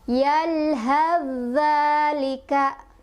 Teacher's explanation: Harusnya fa sukunnya sudah tidak terdengar, jadi sudah kita masukkan ke zal dan agak ditekan karena zalnya bertasydid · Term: idgham mutajanisen